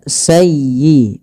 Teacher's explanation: pada lafal sayyi tekan di huruf ya-nya karena dia ya tasdid dan lembutkan, ya, sayyi, bukan sayyi, tapi sayyi'atan wa ahatat bih.